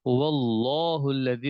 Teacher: لفظ اللہ کو موٹا پڑھنا پڑے گا